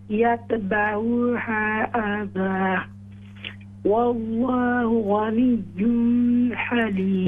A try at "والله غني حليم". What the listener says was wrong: إظهار کر یہاں اخفاء نہیں ہے والله غني حليم